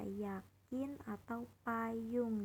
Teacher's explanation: Y seperti pada kata yakin atau payung diucapkan dengan lidah mendekati langit-langit tanpa menyentuhnya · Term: fonem semivokal